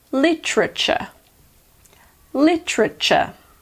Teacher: lots of native speakers also pronounce the first T, and not just the second one, as ch. That gives us literature.